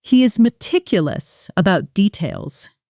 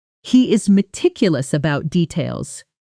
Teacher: In fast natural speech, meticulous about often blends together with the t sound softening, so it can sound closer to meticulous about almost losing the hard separation between the two words.